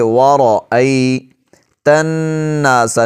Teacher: یہاں پر را کو موٹا پڑھیں گے۔ وَرَأَيْتَ النَّاسَ، نون پر شد ہے، غنہ کریں گے، آواز کو 1 سیکنڈ کے لیے، 1.5 سیکنڈ کے لیے ناک میں لے جا کر پڑھیں گے۔